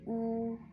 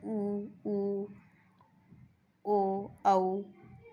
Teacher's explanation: पूरे होठ हमारे गोलाकार हुए हैं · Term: व्रतमुखी